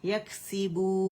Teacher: 1 count کا جو فطری غنہ ہے وہ ناک میں آپ لوگوں نے فیل کرنا ہے نون کے لیے